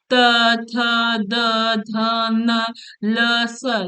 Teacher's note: त जब बोलेंगे तो जीव आपके दांत पे लगेगा